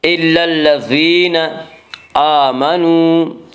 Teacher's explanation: إلا الذين آمنوا، حمزہ کے اوپر کھڑا زبر ہے، کھڑا زبر کو 1 الف کے برابر کھینچ کر پڑھیں گے۔ آمنوا، واو مدہ وہ واو جو ساکن ہو اس سے پہلے پیش ہو، واو مدہ کو 1 الف کے برابر کھینچ کر پڑھیں گے۔